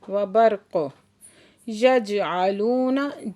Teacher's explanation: यजअलून जीम साकिन है, यहाँ पे कलकला हो रहा है और लू पे वाव साकिन से पहले पेश है तो वाव मद्दा है, 2 हरकत खींच के पढ़ेंगे।